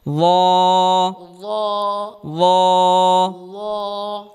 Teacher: এই হরফটি জিহ্বার আগা সামনের উপরের দুই দাঁতের আগা থেকে উচ্চারণ করতে হবে।